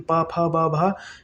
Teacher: फा का उच्चारण स्थान क्या हो जाएगा, ओष्ठ